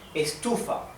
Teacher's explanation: the accent, the stress is in the second syllable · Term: sílaba tónica